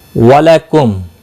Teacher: میم ساکن کے بعد دوسرا میم آیا ہے، ادغام شفوی ہوگا، غنہ کے ساتھ پڑھیں گے